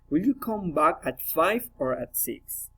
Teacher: Alternative questions, rising and falling intonation.